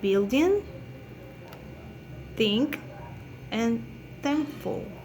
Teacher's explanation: The place of articulation is linguovelar. This sound is produced by the contact of the tongue with the velar. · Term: nasal